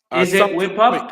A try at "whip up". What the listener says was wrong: Whip up, that's right.